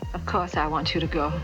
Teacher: the trans-atlantic accent is non-rhodic meaning that r's are not pronounced when they're before consonants or at the end of words